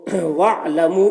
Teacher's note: یہ حمزہ وصل ہے، اس وجہ سے یہ وصل یعنی ملا کر پڑھنے کی صورت میں حمزہ گر گیا ہے، اسے نہیں پڑھا گیا